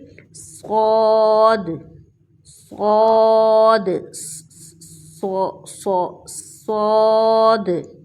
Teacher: اب جو ہم لیٹر پڑھنے لگے ہیں یعنی لاسٹ لیٹر، اس میں ہم اس بات کا خیال رکھیں گے کہ یہ لیٹر موٹے لیٹرز میں سے ہے، یعنی اس کو پر کر کے پڑھا جائے گا۔ سیٹی کی آواز بھی ہے لیکن ساتھ یہ بولڈ لیٹر بھی ہے، تو اس لیے ان دونوں باتوں کا خیال رکھیں گے۔